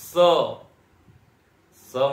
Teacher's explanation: स मतलब ये सरोते वाला स, तो ये भी दंत्य वर्ण है।